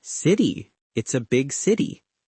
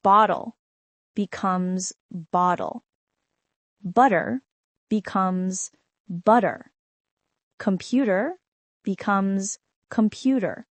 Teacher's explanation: The D sound is softer and quicker to say in the middle of a word than a hard T sound.